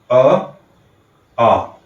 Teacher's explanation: अ और आ का उच्चारण करते समय हमारे अंदर से आती हुई वायु कंठ के पास से होके गुजरती है और मुख से बाहर निकलती है।